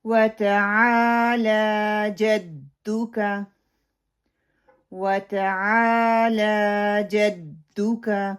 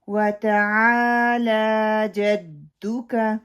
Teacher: عین کو 2 کاؤنٹ کرنا ہے کیونکہ زبر کے بعد خالی الف آ رہی ہے، لام کے اوپر کھڑی زبر آ رہی ہے تو اس کو 2 کی گنتی تک لمبا کرنا ہے.